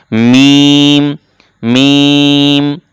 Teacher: দুই ঠোটের শুকন জায়গা থেকে উচ্চারণ করতে হয় মিম